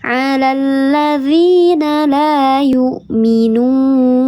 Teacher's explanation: Huruf ya yang sebelumnya harokatnya kasrah, ada alif sebelumnya harokatnya fathah, dibacanya panjang 2 harokat, namanya mad tabi'i. Namanya mad tabi'i yang zahir atau mad tabi'i yang nampak huruf ya-nya, nampak hamzahnya, dibaca panjang 2 harokat.